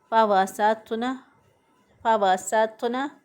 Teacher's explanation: नून को हम लंबा नहीं करेंगे, हम इसको एक हरकत के बराबर पढ़ेंगे, लंबा नहीं करेंगे। · فوسطن، साथुना। तो जो है इसकी अदायगी में होंठों को गोल नहीं करेंगे, सिर्फ ज़ुबान की जो नोक है उसको मज़बूती से ऊपर के तालू की तरफ जहाँ पर लकीरें होती हैं वहाँ पे ज़ुबान को मज़बूती से लगाएंगे तो अदा होगा।